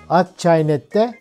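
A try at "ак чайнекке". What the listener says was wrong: Ak çaynekke. K ile ak çaynekke.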